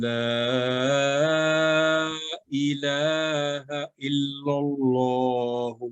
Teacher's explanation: यानी अगर ला के ऊपर वो मद्दे सगीर नहीं भी है फिर भी हम इसको लंबी आवाज करके पढ़ेंगे, 2 सेकंड से ज्यादा ही नहीं, 3 सेकंड 4 सेकंड। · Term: मद्द मानवी